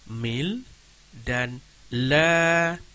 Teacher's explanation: huruf lam yang pertama selepas huruf alif wasal, yakni alif lam syamsiah, tidak dibunyikan sama sekali